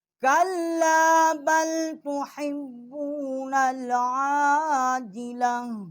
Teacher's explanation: عین جو ہے یہ بھی وصل حلق سے اس کا جو ہے مخرج ہے